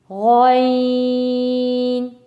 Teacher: غین، تھوڑا سا آواز گلے میں بھری ہوئی لگے، آواز موٹی، تھوڑی سی آواز موٹی سی ہو.